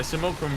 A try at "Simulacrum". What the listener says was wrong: Simulacrum. No. Not Simulacrum. It's not like a fulcrum.